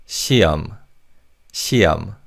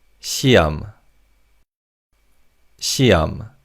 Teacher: The he in the second syllable is silent in fast speech.